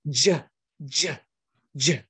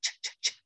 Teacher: I want you to make the vocal cords vibrate. Say it with voicing.